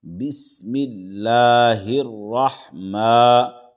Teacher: ہا را زیر ہر، بسم اللہ، راح زبر راح، بسم اللہ الرح، میم کھڑا زبر ما، بسم اللہ الرحمٰ، کھڑا زبر ہے، دو حرکت کے برابر کھینچیں گے اس کو